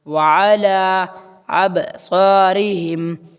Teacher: وعلی سمعہم وعلی پھر واو آ گیا. واو کو تھوڑا منہ گول کر کے پڑھنا اور عین نکالنا ہے الگ سے